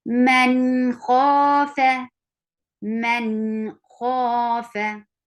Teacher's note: There is nun sakin, and after nun sakin you find kha, and kha is one of the throat letter. So you will say the sound of nun sakin very clearly with sifa of tawassut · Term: izhar